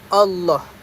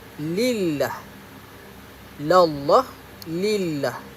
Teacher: boleh disebut secara tafkhim, iaitu tebal, seperti Allah, dan boleh juga disebut secara nipis, iaitu lam tarqiq